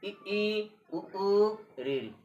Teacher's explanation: मुख न के बराबर खुलता है अर्थात लगभग बंद रहता है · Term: समृत स्वर